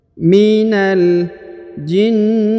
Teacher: Kemudian minal jinnati. Huruf na langsung sambung ke huruf lam yang berharokat sukun ya